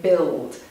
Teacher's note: the L sounds a bit like a vowel. And this happens at the end of a word or before a consonant.